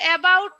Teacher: vowel সাউন্ডটা প্রায় উচ্চারণ হচ্ছে না, একেবারে প্রায় মানে খুব কম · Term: শোয়া